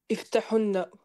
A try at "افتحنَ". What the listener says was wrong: Ça, tu dis iftahunna. T'as mis une damma sur le ha.